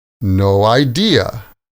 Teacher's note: The stress is on no and idea.